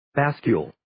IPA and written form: 'bæskjuːl (Bascule)